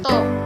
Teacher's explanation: top diucapkan top, O-nya besar, dengan T apicodental